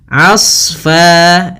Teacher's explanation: Asfa, di sini huruf a ketemu dengan huruf shad yang tebal. Hati-hati jangan menebalkan ainnya, tapi di sini ditebalkan adalah huruf shadnya. Hati-hati juga jangan sampai terpantulkan huruf shadnya.